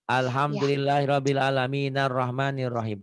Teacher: Maksudnya gini, kalau dia nyambung nih ya, alhamdulillahirabbil alamin ar-Rahman tuh alifnya nggak bunyi itu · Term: hamzah wasol